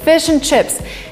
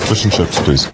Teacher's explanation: the word and is in a weak form, and basically we only say n